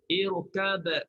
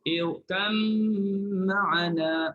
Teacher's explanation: Kalau idgham, irkam ma'ana, masukkan ba dalam mim